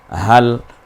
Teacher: এই হাঁটা গলায় ছেড়ে দিয়ে হাল